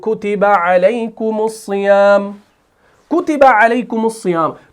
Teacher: حالانکہ اصل میں میم ساکن ہے لیکن اس صیام کے ساتھ ملانے کے لیے ہم نے اس میم جمع کے اوپر پیش لگا دیا. کیوں؟ اجتماع ساکنین علی غیر حدہ کا قاعدہ ہے, ٹھیک ہے.